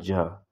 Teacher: फिर सघोष अल्प प्राण में ज